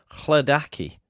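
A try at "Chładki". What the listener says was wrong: Chladki. You're putting an extra A in it.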